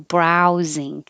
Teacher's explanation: the ow needs to open a lot when you start brow and then close with an ooh